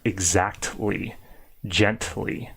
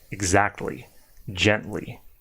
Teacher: the T L doesn't blend together and the T sound is actually pretty strong